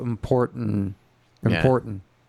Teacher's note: most people don't say the last T